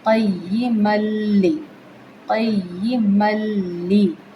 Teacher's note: میم دو زبر کو لام کے ساتھ ڈائریکٹ ملانا ہے۔ یہ ادغام بلا غنہ ہوگا کیونکہ لام اور را تنوین کے بعد آئے تو وہ بلا غنہ ملائے جاتے ہیں۔